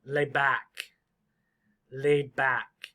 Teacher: The D can be pretty quiet.